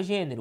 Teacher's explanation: cuja a sílaba tônica recai sobre a antepenúltima sílaba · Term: proparoxítona